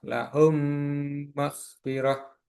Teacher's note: Sedangkan yang ketiga adalah idgham mimi. Yaitu dilebur yaitu mim bertemu dengan mim.